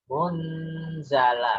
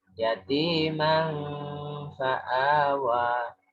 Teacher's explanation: Munzala kan jelas nunnya ya. Tapi kalau fa ini enggak jelas nunnya.